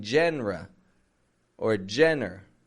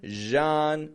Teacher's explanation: now that word genre spelled with g n r e but it maintains the French Z kind of sound in the beginning I'm not saying JRE or Jenner but genre strong in the